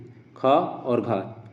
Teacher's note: महा प्राण जिसमें जो है वायु या साउंड जो है ज्यादा देना पड़ता है। जैसे ख और घ दोनों में जो है साउंड ज्यादा देना पड़ रहा है।